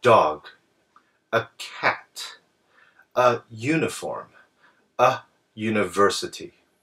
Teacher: If you just look at the spelling, you would think that an should be used with both uniform and university. However, these words actually begin with the U sound, which is actually a Y sound. So that's why we use a instead of an.